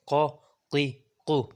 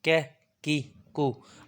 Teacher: اب قاف کو موٹا کرنا ہے ہم نے اور کیف کو پتلا کرنا ہے